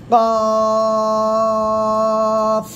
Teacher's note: জিহ্বার গোড়া তার বরাবর উপরে তালুর সঙ্গে লাগিয়ে উচ্চারণ করবেন